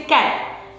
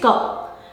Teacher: the child omits the or deletes the final consonant, that is t, and says ka. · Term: final consonant deletion